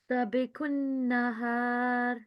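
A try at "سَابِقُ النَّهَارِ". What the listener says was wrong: Okay, seen is followed by a blank alif, and it is acting here as alif maddiya. Okay, so 2-second elongation is required here. Seen should be prolonged.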